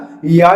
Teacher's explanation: या जब बोलते हैं तो आपकी जीभ मूर्धन से भी टच नहीं करती, या जब बोलते हैं तो आपकी जीभ दंत से भी नहीं टच करती, या ओठ से भी नहीं बोला जाता, या कंठ से भी नहीं बोला जाता। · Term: तालव्य